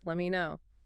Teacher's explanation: >> Standard reduction. The T in let drops before the M and me reduces